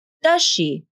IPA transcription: dʌʃ.ʃi